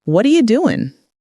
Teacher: What are you becomes what are ya? That's 3 words reduced to almost one sound. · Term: connected speech